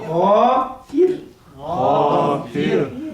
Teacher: الفاء مكسورة فتجد الراء مرققة خالص